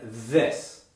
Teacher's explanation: Okay, so now that we've studied the voiceless sound, let's look at its partner, the voiced interdental fricative, which is the sound we hear in this. For many of my students, this sound has been a bit more difficult to produce than th, because not only do we need to have the same correct placement of tongue and teeth, we also have to vibrate the vocal cords. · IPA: /ð/